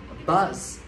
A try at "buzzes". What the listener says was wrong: Số nhiều. cộng thêm một âm tiết nữa. Đọc rõ nè.